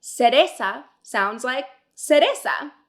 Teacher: Just like in English, se has two sounds, the hard sound k and the soft sound s. The soft sound s and zeta both sound identical to ese.